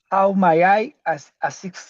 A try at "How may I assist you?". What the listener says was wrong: it's not my, it's may. May I?